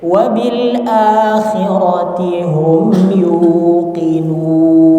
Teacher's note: coba pelan-pelan dihilangkan suara hidungnya